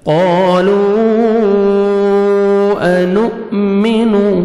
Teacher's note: حمزہ جزم جھٹکے سے پڑھیں گے